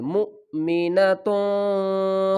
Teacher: حمزہ ساکن ہے، یہاں پر کیا کریں گے، جھٹکا دے کر پڑھیں گے